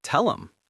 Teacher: This happens very often with pronouns like he, him, her, and his. When these words appear in the middle of a sentence, native speakers almost always cut off the h sound completely. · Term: the H dropped